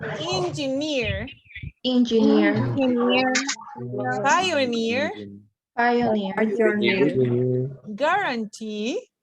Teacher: words words that and in suffixes such as ear or e stress on the final syllable